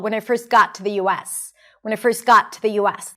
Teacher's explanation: notice the words that she chooses to stress - got, US.